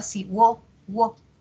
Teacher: Hago el silabeo, separo en sílabas, encuentro un diptongo creciente, de cerrada pasa abierta